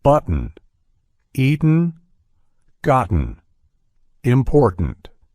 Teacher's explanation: how my throat momentarily constrains the T sound in the middle of these words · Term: glottal T